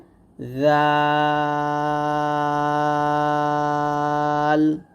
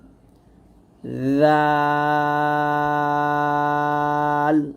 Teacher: এরকম ভাবে জালটা খুবই সতর্কভাবে বলতে হবে জিহ্বাটা সামনের উপরের মানে জিহ্বার আগা সামনের উপরে দুই দাঁতের আগার সঙ্গে লাগিয়ে জালটা আমরা পাতলা করে উচ্চারণ করব সাবধান থাকতে হবে যেন জিহ্বাটা কোনভাবেই নিচে দাঁতে না লাগে তাহলে